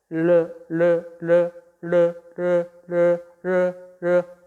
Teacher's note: 공기가 혀 양옆으로 흘러나오는 소리다. · 혀끝을 윗 잇몸에 댄 채 공기를 그 양옆으로 흘려보내면서 내는 소리다. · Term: 유음